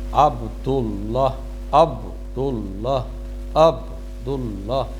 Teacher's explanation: قلقلہ اس انداز میں آپ نے پڑھنا ہے کہ جیسے یہ ڈبل لفظ ہے